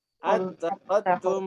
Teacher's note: Berarti apa? Yang digugurkan adalah hamzah wasl.